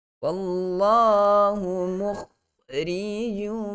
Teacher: Dan terakhir sekali, wallahu mukhrijum. Wallah, tebalkan kalimah Allah, lafzul jalalah pada lam itu, kerana sebelum lafzul jalalah ada huruf yang berbaris di atas.